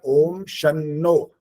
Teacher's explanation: शनो ऐसा लगा वो, जैसे श और आगे नो, ऐसा नहीं होता। जब शन्नो है ना, तो न का आधा वाले न का भी उच्चारण सुनाई दे, और पूरे वाले में तो मात्रा भी डली हुई है, तो पूरा समय देना पड़ेगा वहां पर।